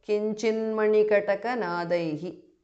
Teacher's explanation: Mahamantram kinchit because of sandhi. Kinchit, the tu changes to n because of sandhi